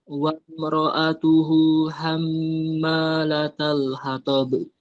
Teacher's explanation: Ma-nya kepanjangan, 2 harokat saja.